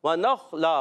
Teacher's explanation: तनवीन के बाद वाव, इदगाम माल गुन्ना का कायदा। वनख़ला, खा की अदायगी क्लियर, खा में भी कलकला नहीं होता, और खा उर्फ़ मुस्तालिया में से, मोटे उरूफ में से, और दो ज़बर की तनवीन को वफ़ में अलिफ से बदल देंगे।